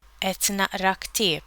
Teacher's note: the letter Q in et and na'ra is pronounced as a glottal stop, like the consonant qaf in many Arabic dialects. Na'ra comes from Arabic aqra, but like we saw earlier, in Maltese the first-person singular form has an n prefix.